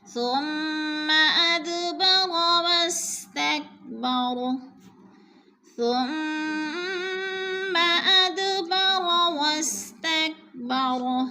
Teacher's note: ثم کی میم مشدد ہے، غنہ کریں گے، ناک میں آواز لے جائیں گے. اد پہ قلقلہ ہو رہا ہے، دال ساکن ہے اور حروف قلقلہ میں سے ہلا کر پڑھیں گے